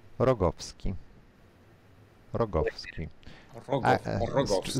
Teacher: Stress on the second last syllable.